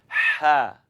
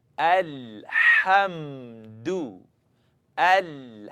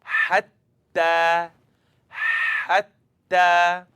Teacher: Hatta comes out very naturally. Comes out from the second part of the throat.